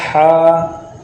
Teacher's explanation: اس سے آگے آتا ہے ہا، اس کے یہ حلق کے مخارج میں آ جاتا ہے، یہ اس ادا یہ حلق کے درمیان والے حصے سے ادا ہوگا۔ ہا جو حلق کے درمیان والے حصے سے ادا ہوگا